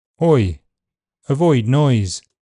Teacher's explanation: In GB, Oi is a diff thong that moves from a rounded back position to an unrounded near front position with a slight closing of the jaw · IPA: /ɔɪ/